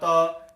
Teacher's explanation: अपनी जो जीभ है वो दांत को स्पर्श कर रही है, इसलिए वो उच्चारण स्थान दंत हो गया है